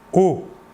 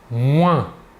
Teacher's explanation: l'air sortira entièrement par la bouche alors que pour le on l'air sortira par le nez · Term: nasal